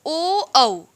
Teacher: ओ, औ इसको बोलते हैं कंठ और ओष्ठ की सहायता से